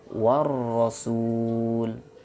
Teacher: ada huruf alif dan lam, tetapi tidak dibaca, dilewatkan dari waw langsung ke ra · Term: alif lam syamsiyah